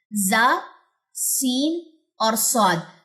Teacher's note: या हमने इसके बारे में ये भी देखा था कि जब जुबान की नोक नीचे वाले जो दो दांत हैं उसके मतलब अंदरूनी हिस्से से लग रही होती है या दोनों मैच कर रहे होते हैं दांत ऊपर वाले दो और नीचे वाले दो आपस में तो जा सीन और स्वाद अदायगी इनकी होती है और इनमें सिटी होती है। तीनों का मखरज मैंने यहां पे मेंशन कर दिया और एक ही मखरज होगा। · जुबान की नोक और ऊपर नीचे के दांत जब आपस में मिलेंगे तो जा सीन और स्वाद अदा होगा